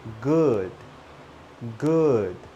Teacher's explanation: Remember, it goes up, down, and up. Up, down, and up.